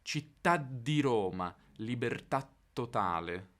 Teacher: in italiano standard percepiamo ancora una traccia di quella sillaba caduta nel raddoppiamento della consonante che c'è dopo